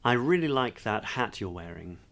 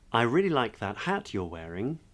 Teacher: So upspeak or up talk or high-rise terminal, high-rise intonation, upward inflection, they're all names essentially for an upward pitch at the end of a declarative sentence